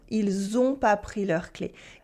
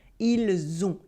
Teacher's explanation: the silent S in il comes before a vowel. So we make la liaison